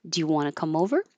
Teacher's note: And it's a yes no question. So you go up.